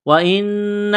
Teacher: نون مشدد ہے، غنہ کریں گے، آواز ناک میں چھپائیں گے